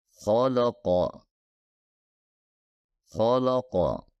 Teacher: khqo kholqo di mana Ko dan qof adalah huruf tebal dan lam harusnya lam tarqik atau lam tipis jadi sebaiknya beralih dari tebal ke tipis kemudian ke Tebal lagi